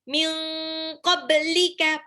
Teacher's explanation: ba-nya di sini pantul karena dia qalqalah.